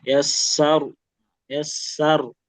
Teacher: Dia punya sifat khusus namanya takrir, getar. Cuma perlu diperhatikan tadi getarannya jangan terlalu banyak, jangan juga sampai hilang.